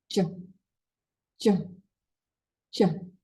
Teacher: In the angle of information, post alveolar. In the angle of energy, affricate. In the angle of material, voiced. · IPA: dʒ